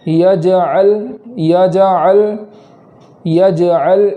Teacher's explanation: میں جیم کو قلقلہ کے ساتھ اس طریقے سے پڑھیں گے کہ آواز لوٹے